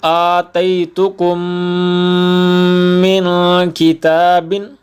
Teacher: میم ساکن کے بعد میم آ جائے تو اس کو ادغام کریں گے اور غنہ بھی کریں گے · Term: ادغام شفوی